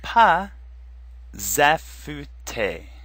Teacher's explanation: normally the final s is silent but here it's going to make a Z sound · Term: liaison